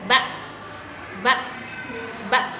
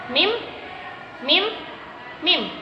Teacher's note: huruf mim dan ba ini, yaitu keluar dari dua bibir yang dirapatkan.